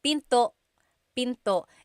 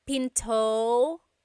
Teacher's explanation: And remember, don't forget the glottal stop. Don't forget to stop the sound at the end. That's called a glottal stop.